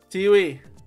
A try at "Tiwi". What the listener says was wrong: The W is silent. They. Hey. No, they.